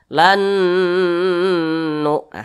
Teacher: huruf nun yang sukun ini dia dimasukkan ke huruf nun yang di depan Maka huruf nun yang sukun ini dia tidak dianggap ya tidak · Maka huruf nun yang sukun ini dia tidak dianggap ya, tidak dibaca, dilebur. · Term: idgham bunah